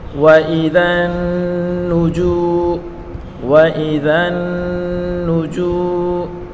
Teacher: نون مشدد ہے، اس کو غنہ کے ساتھ پڑھیں گے اور نون کے اوپر بڑی حرکت ہے، اس کو بغیر کھینچے پڑھیں گے۔